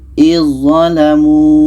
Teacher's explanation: Maka zal ini kita tak baca lagi, terus masuk ke za. Izzalamu. Ini yang pertama, ujung lidah bertemu ujung gigi seri atas.